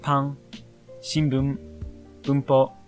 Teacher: This is because it isn't quite like the N in English. N cuts off sound in the back of the throat, not the front, making a slight nasal hum that can be near the M sound. It's a lot like the N in song.